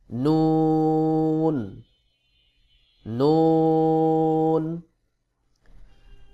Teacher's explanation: জিহ্বার আগা তার রবার উপরের তালুর সঙ্গে লাগাইয়া নুন উচ্চারণ হবে